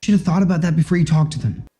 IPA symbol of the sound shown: ɔ